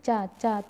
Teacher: च ऊपर जाके तालू में टच करती है तो यह च का उच्चारण स्थान तालू हो जाएगा नेक्स्ट क्वेश्चन